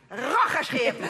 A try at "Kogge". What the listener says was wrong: Het is Kogge, met een K.